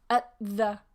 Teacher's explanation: The t and the come together. Yeah, because they're both at the front of the mouth.